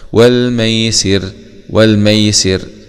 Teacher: لان حرف الراء جاء بعد حرف مكسور، يبقى وراقك الراء اذا ما كسر كذاك بعد الكسر حيث سكن، فهنا بنقف على الراء بالتركيك لانها جاءت بعد حرف مكسور